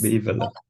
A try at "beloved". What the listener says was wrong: Yeah, but it's not actually like that. It's actually 3 syllables, this one. It's an unusual scenario. So it looks like this. Beloved. Imagine it's like this. Beloved. 3 syllables. Yeah, it's a tricky one, because normally when we have something like that, because we say loved.